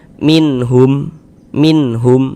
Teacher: Jadi bunyi nun sukun atau bunyi tanwinnya itu dibaca jelas kemudian tidak didengungkan. Nah, maka karena dia tidak didengungkan, tidak digunahkan, maka dibaca pendek saja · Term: izhar halqi